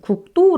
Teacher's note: 기역 비읍 받침 들은요 당연히 된 소리로 발음이 나거든요